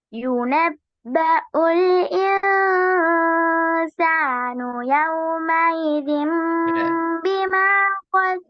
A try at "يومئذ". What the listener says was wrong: யௌம ஈதிம் அப்ப யாதான் வந்து அப்படிதானே? அலிஃப் வரல. யௌம ஈதிம் பிமா கத்தம யாதான் வருது. நீங்க அலிஃப் உச்சரிக்கலையே.